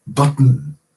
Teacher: There isn't really a vowel between the middle consonant and the N sound. You slide right into the N.